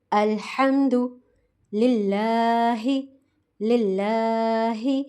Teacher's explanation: लाम अल्लाह का बारीक पढ़ा जाएगा। ठीक है? क्योंकि अल्लाह के नाम से पहले ज़ेर है। · لام اللہ کا باریک پڑھا جائے گا. ٹھیک ہے، کیونکہ اللہ کے نام سے پہلے زیر ہے، تو یہاں پر ہم لام کو باریک ادا کریں گے.